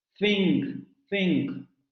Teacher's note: Va a ser fricativo, es decir, vamos a dejar que el aire salga de forma turbulenta cuando se tocan la lengua y los dientes, y no va a haber vibración en las cuerdas vocales. · Es un fonema dental fricativo sordo. Dental fricativo sordo, efectivamente, tampoco lo tenemos en español.